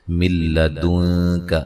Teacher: یہاں نون ساکن کا ادغام بلا غنہ ہے، غنہ نہیں کریں گے